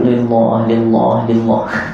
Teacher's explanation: sebelum lafaz Allah baris bawah nipis